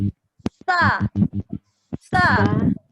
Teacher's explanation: Nafas keluar. Sa, mengalir suara, ujung lidah dikeluarkan.